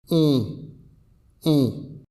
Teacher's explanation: la voyelle on on alors premièrement la position des lèvres alors les lèvres elles sont arrondies c'est-à-dire qu'elles forment un petit rond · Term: voyelle nasal